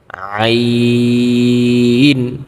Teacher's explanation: আইন উচ্চারণের ক্ষেত্রে আমাদের গলা একটু চাপ দিয়ে পড়তে হবে কণ্ঠতে, তাহলে কিন্তু আইনের উচ্চারণটা সুন্দর হবে এবং নরম আওয়াজে পড়তে হবে, যেমন আইন।